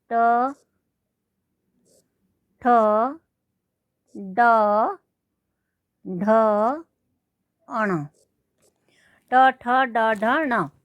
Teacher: ये मूर्धन्य होते हैं, मूर्धा से बोले जाते हैं।